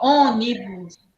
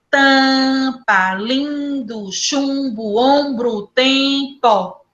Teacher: Esse M, esse N só é colocado aí para alongar a vogal e para nasalizar a vogal. Ele não é colocado para ser pronunciado.